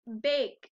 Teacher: i hear the t sound at the end of baked